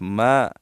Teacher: الف مدہ ہے، ایک الف کی مقدار اس کو ہم کھینچیں گے